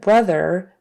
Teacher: we have an R blend with a B bruh BR and then R vocal on the end